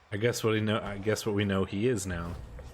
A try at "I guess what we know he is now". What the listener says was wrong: Emphasis on the wrong syllable. That was the biggest thing.